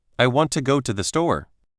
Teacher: Notice how want, go, and store are stronger, while I, to, and the are softer and quicker. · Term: rhythm of English